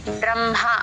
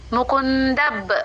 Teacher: ఆ బ కింద రా వత్తు సంయుక్తక్షరం ఉంది ఆ ద తో బాని దబ్ర అని కలుపుతూ చెప్పాలి